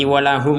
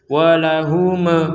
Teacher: Walahum sekedar sudah selesai, nggak ada pantulan sama sekali. Walahum itu salah.